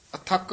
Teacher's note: ਅਥੱਕ ਕਸ ਕੇ ਬੋਲਣਾ ਅਥਕ ਨਹੀਂ ਕਹਿਣਾ ਹੈ।